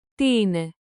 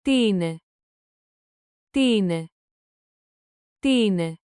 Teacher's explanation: Make the question rise at the end. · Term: rising tone